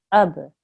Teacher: This is a qalqala letter. So remember, we have to make a soft jerk there. Ab. And this is a sad, thick sound.